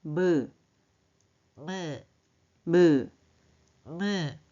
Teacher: 코 안을 막으니까 소리가 달라져요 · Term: 코 안을 올리는 소리